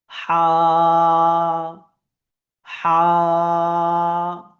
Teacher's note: হায়ের ক্ষেত্রে আমাদেরকে আরেকটি বিষয় লক্ষ্য রাখতে হবে, যে আমাদের যে আওয়াজ, এটা কণ্ঠনালীর ভেতর থেকে বার হবে। কণ্ঠনালীর ভেতর থেকে আমাদের হা, এই যে শব্দটি, এটি উচ্চারিত হবে।